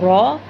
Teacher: इसे मोटा पढ़ा जाता है, ये ऊंचा नहीं पढ़ा जाता, ये मोटा पढ़ा जाता है, रॉ। लेकिन इसके लिए ज़ुबान को गोल नहीं करना।